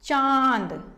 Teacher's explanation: जब इसको हम बोलते हैं तो थोड़ी हमारी आवाज नाक से आती है